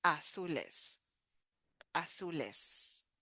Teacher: But in Spanish, we don't, well, for Latin America, okay? Latin American Spanish does not make too much of a difference between the Z and the S.